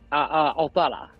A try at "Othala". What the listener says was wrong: It's pronounced Othala. It's pronounced Othala, not Othala. Othala. The emphasis on the what's the word I'm looking for? The words, syllables, right? So Germanic, the Old Norse, Old Germanic languages, the emphasis is always put on the front syllable. So like it's not Othala, it's Othala.